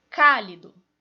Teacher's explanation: a mais forte é antepenúltima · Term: proparoxítonas